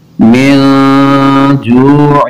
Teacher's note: نون ساکن کے بعد جیم حروف اخفاء ہے، غنہ کریں گے